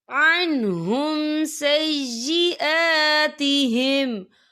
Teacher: یہاں پہ کھڑی حرکات ہے، تو ہم اسے 2 یا 3 حرکت کے برابر کھینچیں گے